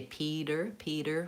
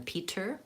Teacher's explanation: we tend to say Peter with a flap T rather than Peter.